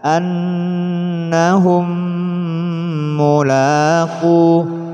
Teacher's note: mim mati bertemu mim didengungkan. Mim mati yang didengungkan hanya apabila bertemu dengan mim dan ba saja.